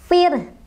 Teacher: Ro-nya, ya, ro sukunnya didahului oleh huruf yang berharokat kasrah, ya. Jadi, ini dibaca tarqiq